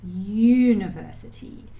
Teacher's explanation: when we say 'university', it sounds like /j/